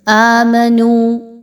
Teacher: آ اس کو دو حرکات کے برابر لمبا کریں گے۔ نو واو مدہ ہے، دو حرکات کے برابر لمبا کیا جائے گا۔